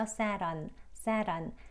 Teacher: T가 리을 소리에 가깝게 들리죠? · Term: flap T